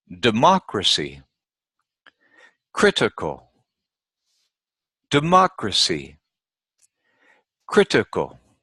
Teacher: the third syllable from the end, counting backwards, is the syllable that is stressed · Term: antepenultimate